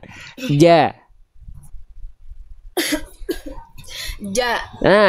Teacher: Tengah lidah mengarah ke langit-langit di atas. Menempel ke langit-langit di atasnya. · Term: huruf jim